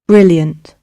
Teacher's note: brilliant in British English, you pronounce the R.